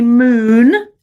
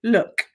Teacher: say moon, and then say look, and you can see one's much longer